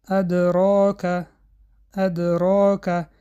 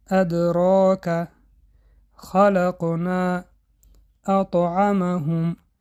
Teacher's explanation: قلقله صغرا یعنی قلقله خورد صدا کمتر است این در آن حالتی است که حرف قلقله در بین کلمه یا جمله آید به سبب خواندن را دوام دادن صدا کمتر به گوش می‌رسد